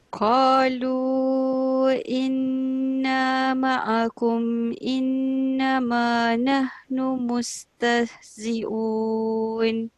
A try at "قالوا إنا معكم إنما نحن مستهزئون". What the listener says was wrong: Okey, kejap dekat ma'akum tu. Cuba murnikan lagi dia punya sebutan tu, menunjukkan kita tahu kat situ tak boleh dengung. Inna ma'akum